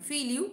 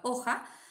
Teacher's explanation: la pérdida de la F inicial